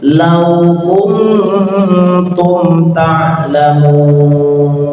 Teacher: nun bertemu dengan ta namanya ikhfa ya, tapi ikhfanya aqrab, lidahnya sudah berada di makhraj ta. Kum seakan-akan ada yang hampir baca kuntum ya, tapi yang jelas ikhfanya samarnya sedikit.